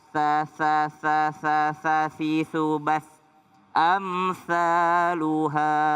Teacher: Ujung lidah bertemu dengan gigi atas. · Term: huruf tsa